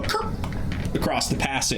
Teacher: I did a glottal stop instead of a T